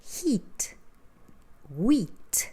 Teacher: have this sound e which is a tensed e sound